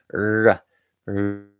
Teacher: your tongue is kind of curled back and bunched up. Your tongue is kind of like squeezed together.